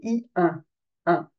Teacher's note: on va tirer au niveau des lèves on va tirer donc on prononce un I et on le fait remonter dans le nez